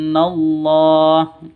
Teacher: [Musik] [Musik] wansallah di sini ada nun mati nun mati atau nun sukun bertemu dengan Shad samar didengungkan siap-siap ke huruf shadnya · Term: ikhfa Hakiki